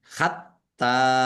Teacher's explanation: t-nya dibaca dobel ada tasdidnya ditekan